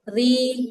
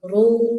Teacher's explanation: Ro kasrah tipis ri domah tebal ru kencangin suaranya ru. Jangan ru ru jangan datar.